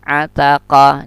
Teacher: pangkal lidah dengan langit-langit yang di atas dekat dengan pita suara. Ataqa, dan dia termasuk syiddah, juga tertahan.